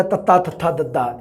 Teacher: साह दी हवा जीभ दी नोक द्वारा उपरले दंदां दे पिछले पासे तो रोकी जावे। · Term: दंती